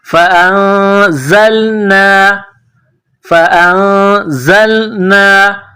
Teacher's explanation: نون ساکن کے بعد زا ہے، حروف اخفا ہے تو یہاں آواز ناک میں چھپائیں گے، غنہ کرنا ہے